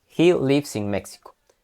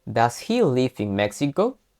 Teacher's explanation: en pregunta tendremos que terminar con una entonación hacia arriba